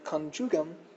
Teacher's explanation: I'm pronouncing the I more as a consonantal J, more as like our English J sound